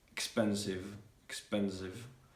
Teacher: when the letter V is also at the end of the word, you also need to pronounce it like a V, not like an F